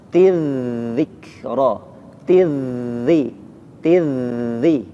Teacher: zal ketika ditasydid maka dia mengalirkan suaranya.